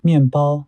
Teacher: The syllable coda /n/ of the first syllable is influenced by the initial consonant /p/ of the second syllable and changes from alveolar nasal to bilabial nasal /m/ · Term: regressive assimilation